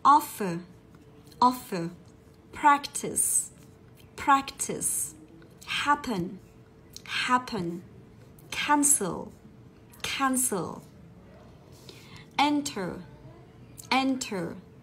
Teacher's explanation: Chúng ta tập trung vào những cái động từ có hai âm tiết nhưng trọng âm của nó lại nhấn vào âm thứ nhất